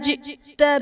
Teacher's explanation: جئت میں حمزہ ساکنہ ہے، جھٹکا دے کر پڑھیں گے